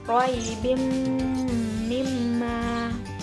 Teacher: Contoh lainnya yaitu roibim mimma. Jadi ada ba dengan tanwin bertemu dengan huruf mim, jadi dibaca dengan mendengung. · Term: idgham bi gunnah